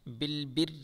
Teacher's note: اس را کو باریک پڑھیں گے کیونکہ را کے نیچے زیر ہے